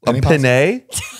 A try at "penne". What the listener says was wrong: You're saying it like Pinay. Penne. Oh, yeah, pen is pin.